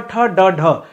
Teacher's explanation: दूसरा है ट ठ ड ढ ट में क्या होता है आपका जीभ हमेशा उल्टा हो जाता है इसलिए ट ठ ड ढ जो होता है इसे मुर्धा ध्वनि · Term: मुर्धन्य व्यंजन, मूर्धन्य व्यंजन